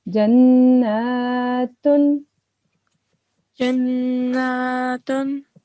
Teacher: we have to prolong vertical fatha for 2 seconds